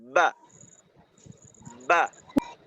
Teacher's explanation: যেমন ধরেন, আমরা যখন বা উচ্চারণ করি, বা উচ্চারণের জন্য উপরের ঠোঁটকে নিচের ঠোঁটের সাথে চাপ দিয়ে ধরি। ধরার পর ভিতর থেকে একটা ধাক্কা দিয়ে ওই ধাক্কার মাধ্যমে ঠোঁটটা আলাদা করি।